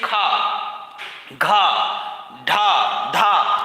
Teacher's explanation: खा को बोलने में वायु की मात्रा अधिक लगेगी और वाइब्रेशन उत्पन्न होगा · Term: महाप्राण